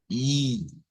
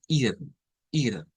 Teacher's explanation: en español para el estándar vamos a usar una I Porque esa e con dos puntos no suena a e no es como e sino como I